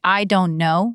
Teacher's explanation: The stress should land on know or stay soft. If you're actually annoyed, then you can say I don't know with don't stressed. That's intentional.